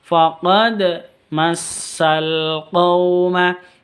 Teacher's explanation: Faqad, dal sukun dipantulkan karena qalqalah sughra